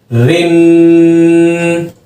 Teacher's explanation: بالکل باریک آواز آنی چاہیے لیکن لہر نہ مارے زبان